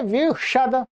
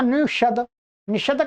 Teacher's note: जब वी लगा देंगे तो यहां पर क्या है, स को श हो जाएगा मूर्धन्य